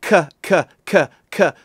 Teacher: So if you say K, K, K, K over and over again, and you pay attention to the back of your tongue is going up against the roof of your mouth, the hard palate, which you can touch without gagging yourself. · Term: k zone